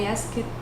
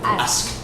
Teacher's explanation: When we're dealing with the verb ask, past tense, you want to pronounce that ED sound as a T.